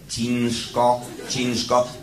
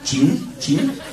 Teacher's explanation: to jest miękkie ci, następnie dosyć twarde, przedniojęzykowe n, n, cin, cin i ż, ale przechodzące w bezdźwięczną spółgłoskę szczelinową sz, a więc ż, ale bezgłośny, ciężko, ciężko.